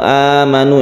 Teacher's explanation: mad badal itu adalah Hamzah yang kita panjangkan satu Alif